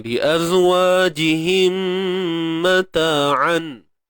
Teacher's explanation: li azwajihim mim mati bertemu mim idgham mithlain